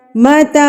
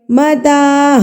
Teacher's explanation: تا کے اوپر کڑی زبر ہے تو اس کو بھی ایک حرکت کے برابر کھینچیں گے